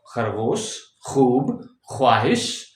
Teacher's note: ख हलक से आवाज आती है खराश की तरह